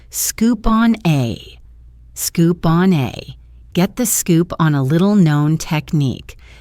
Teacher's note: Instead of saying scoop on a with pauses, he links it all together into one smooth sound. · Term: connected speech